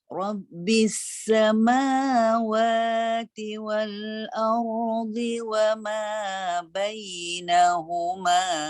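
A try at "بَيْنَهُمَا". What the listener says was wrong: Na tu turun sikit lagi.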